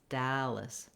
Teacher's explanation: Not a lot of vowel there in that second syllable.